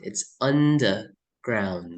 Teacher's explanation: See the pronunciation. R is being omitted.